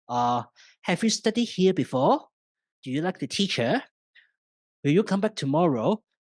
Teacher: for yes/no questions like, have you studied here before? Do you like the teacher? Will you come back tomorrow? We use the rising tone